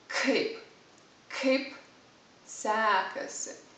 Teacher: you have to pronounce kaip it's kind of an explosion